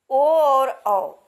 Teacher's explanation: ओ औ स्वरों का उच्चारण कंठ और ओठ दोनों से होता है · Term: कंठोष्ठ वर्ण